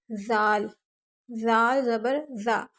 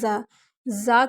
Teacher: میں نے آپ کو اس کی ادائیگی کا طریقہ بتایا ہے آپ کو کہ زال ادا کرنے کا ایک خاص طریقہ یہ ہے کہ زبان کی نوک کو دونوں دانتوں کے نیچے رکھ کے پڑھنا ہے، دونوں دانتوں کے درمیان میں یعنی کہ سینٹر میں رکھیں اور پھر ادا کریں زال، زال زبر زا۔